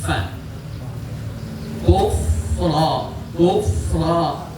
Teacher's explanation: Ujung gigi seri atas nempel pada bibir bawah. Fa kufra. Nah ro-nya sama dengan yang tadi, ro fathah itu harus tebal. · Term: huruf fa